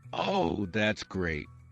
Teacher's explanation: Falling intonation to show sarcasm.